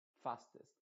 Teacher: A pesar de que es una E, tú ves escrita una E, esa E se está pronunciando con una I modificada